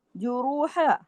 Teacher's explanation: हा को मुंह खोल के बड़ा आगे आ नहीं लगा देना, अलिफ नहीं लगा देना, इजाफी हर्फ लहने जली, हराम दर्जे की गलती हो जाती है अगर इस तरह आवाजों को बढ़ा दिया जाए।